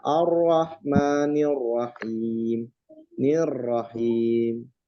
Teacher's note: ro itu tebal pada saat dia berfathah dan berdoma. Nah, kalau dia kasroh dia tipis